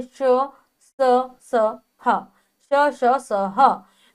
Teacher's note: जब हम इन वर्णों का उच्चारण करते हैं तो हमारी मुख से जो वायु निकलती है वो घर्षण के साथ निकलती है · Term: ऊष्म व्यंजन